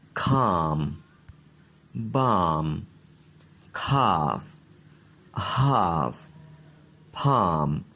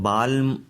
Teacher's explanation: ان الفاظ میں دیکھیں ایل نہیں پڑھا جا رہا